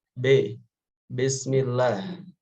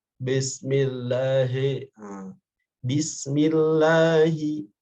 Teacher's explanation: sempurnakanlah bacaan pada huruf ba ketika dia berharokat kasroh dengan menyempurnakan harokat kasrohnya, yakni bi, bukan b. Bi dengan b beda.